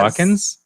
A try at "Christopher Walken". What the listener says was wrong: No S at the end.